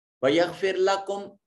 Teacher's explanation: را ساکن ہے اور اس کا ماقبل مقصور ہے، را کو بریک پڑھا جائے گا، بریک پڑھنے کو مرقق پڑھنا کہا جاتا ہے